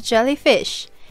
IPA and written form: ˈdʒɛliˌfɪʃ (jellyfish)